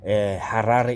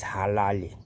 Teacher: The Zulus, mostly they are shy of pronouncing the R, so they either pronounce it as L.